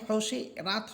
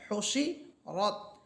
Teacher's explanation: এখানে হোসি রাত হবে না, বরং হোসি রত, কারণ র হরফ এটা মোটা, আকার ছাড়া পড়তে হবে।